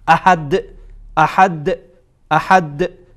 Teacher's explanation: احد اینجا قلقله کبرا هست، یعنی قلقله بزرگه.